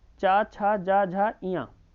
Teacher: तालब्य की बात करें, तालु और जीभ के स्पर्श से किया जाता है इनका उच्चारण।